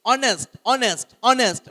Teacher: වචනේ හැදෙන්නේ h එක උදව් වුණාට h එක silent. h එක ශබ්ද වෙන්නේ නැහැ.